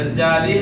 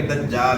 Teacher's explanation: یہاں وقف کریں گے، لام ساکن ہو جائے گا، دجالی ہے تو وقف کریں گے دجال ہو جائے گا.